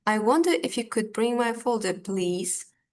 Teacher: we are rising our tone on the last phrase, please. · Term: rising intonation